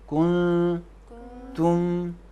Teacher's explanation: کن واضح نہیں پڑھیں گے، کن نون کو تے کے مخرج میں رکھیں گے